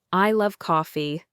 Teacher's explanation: by putting stress on love, you emphasize your strong feeling for coffee